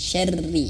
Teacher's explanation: huruf rnya jangan sampai tebal tapi tipis